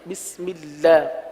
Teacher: اللہ کے لام کو باریک پڑھیں گے